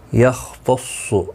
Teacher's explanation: خ مستعلیہ ہے، پر پڑھا جائے گا. صاد بھی مستعلیہ ہے، یہ بھی پر پڑھا جائے گا